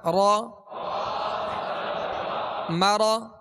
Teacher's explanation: را پر زبر ہے را کو بھی پر پڑھیں گے